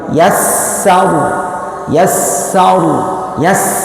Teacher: pengucapan huruf sin itu harus mendesis